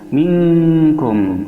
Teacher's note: Minkum ada nun mati bertemu dengan kaf, hukumnya adalah ikhfa ab'ad, yaitu ikhfa'nya tidak dominan daripada gunnahnya sehingga mendekati kepada huruf eng, berdengung